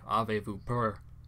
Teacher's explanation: A super common one is the second person plural vous in French. Usually the s at the end is silent, the same if you follow it with a consonant